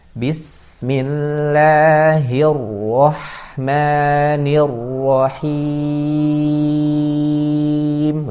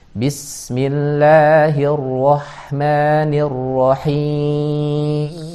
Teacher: Bismillahirrahmanirrahim, rohnya yang kedua juga tebal. Nirrahim, lagi-lagi nirrahim itu jangan ke hidung